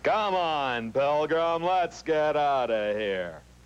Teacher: John Wayne is down here in the chest it's very low in the instrument